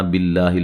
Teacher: لفظ اللہ کو باریک پڑھیں گے، اس سے پہلے حرف پر زیر ہے